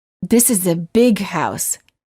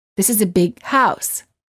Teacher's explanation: However, you wouldn't say, this is a big house. Instead, you would hold the G sound of the word big, and you would say, this is a big house.